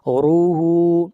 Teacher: را کو موٹا پڑھیں گے، را کے اوپر پیش ہے